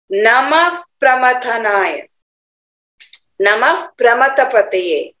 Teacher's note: विसर्ग यहाँ पर कहाँ है, प्रकृते पुरुषात् परम, विसर्ग के बाद प, इसीलिए आधा फ का उच्चारण आएगा।